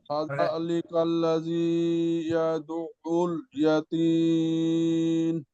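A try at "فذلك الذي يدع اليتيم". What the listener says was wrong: দালা একটু নরম হবে। ফাদা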